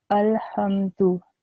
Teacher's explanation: Instead of saying that whole meme sound of saying ma, because of the jazm or the sukoon, I would say hum